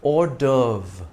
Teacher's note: though the V precedes the R in the spelling, we pronounce it in the reverse order, RV.